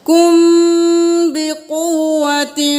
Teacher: اب میم کے بعد با آ گیا تو غنہ کریں کم بقوت قاف پیش با قو واو زبر با قوة بقوة